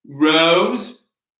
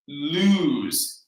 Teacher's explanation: we have an o in rose and an ooh in lose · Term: imperfect rhyme